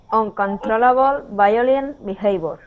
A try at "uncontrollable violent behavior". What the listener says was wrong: All right, and instead of saying uncontrol and using that hard R sound, let's use that English R, uncontrollable violent behavior.